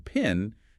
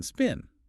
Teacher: Take the P sound. In pin, there's that little puff of air, but not in spin.